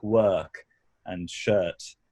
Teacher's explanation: dropped R's before consonants like work and shirt